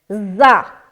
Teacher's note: زا سختی کے ساتھ ادا ہوتا ہے اور اس میں سیٹی والی صفت آتی ہے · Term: صفیر والی صفت